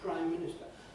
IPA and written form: ˈpraɪm ˈmɪnɪstə (Prime Minister)